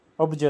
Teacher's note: પ અને જ જોડાય છે ત્યારે પ જે છે એનો બ થઈ જાય છે